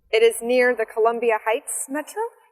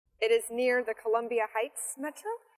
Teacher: restate what she heard using rising intonation